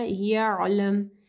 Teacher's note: عین کو جو ہے گلے کے درمیانی حصے سے واضح پڑھنا ہے